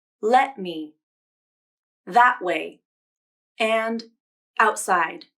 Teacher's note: native speakers may use a glottal stop for the t sound and when this happens i usually call it a stop t